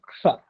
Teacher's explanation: पहले क का उच्चारण करेंगे, फिर श का करेंगे, फिर अ का करेंगे।